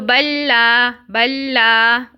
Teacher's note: اس طرح سے یہ بل تھا بل کے بعد کیا آ رہا ہے اب دیکھیں لام آ رہا ہے تو بلا اس کو ہم نے 2 کاؤنٹس دے دیا لا کو اور بل کو آگے ہم نے مرج کر دیا